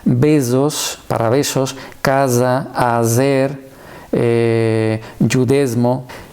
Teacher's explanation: La S sonora, como la S de maison en francés, también es un rasgo típico de la jaquitía.